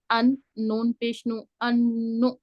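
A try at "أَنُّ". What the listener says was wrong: नु नहीं, झटका नहीं देना। झटका पता क्यों आया है आपको, क्योंकि आपने बहुत जल्दी हरकत को कम किया है।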